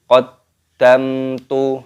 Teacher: mim sukun bertemu dengan huruf ta, hukumnya dibaca idhar syafawi